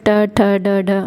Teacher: जैसे भी आप ट, ठ, ड, ढ, ड़ ऐसे बोलेंगे तो आपका जो जीभ है वो थोड़ा सा मुड़ेगी और तालु को स्पर्श करेगी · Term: मूर्धन्य